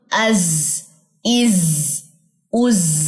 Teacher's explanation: इसमें सीटी वाइब्रेशन सी महसूस होगी